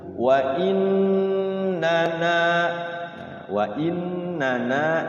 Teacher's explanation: yang pertama pendek gunah aja Nah yang kedua panjang dua harakat jadi na yang kedua dinamakan Mad thi'i fathah diikuti Alif lafi